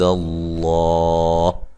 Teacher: لفظ اللہ کو موٹا ادا کریں گے، اس سے پہلے حرف پر زبر ہے اور وقف کی صورت میں جو ہے یہ ہا ساکن ہو جائے گی اور مد کے ساتھ وقف کر سکتے ہیں۔